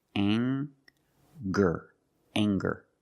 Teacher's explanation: We have the nasal sound plus the hard G, the G sound.